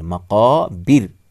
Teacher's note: پھر سے دیکھیے، الہاکم التکاثر، الہاکم التکاثر الہاکم التکاثر حتی زرتم المقابر، میم کو لام کے ساتھ ملائیں گے، را سے پہلے پیش ہے اس لیے موٹا، لیکن جب یہاں را ساکن ہوگی رکنے کی صورت میں تو را سے پہلے زیر ہے اس لیے را کو باریک پڑھیں گے، پتلا پڑھیں گے